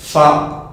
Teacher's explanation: nos dents supérieures vont venir toucher la lèvre inférieure